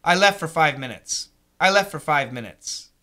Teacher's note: what happens is for most Americans we cancel the T and we say I left for five minutes